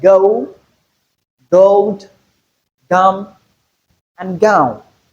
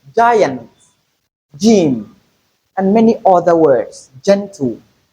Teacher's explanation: Also, let's look at letter G, which can be realized in the hard form and also the soft form. In the hard form as a plosive sound, and then in the soft form as an affricate sound.